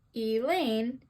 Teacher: in the name Elaine, E is unstressed and Lane is stressed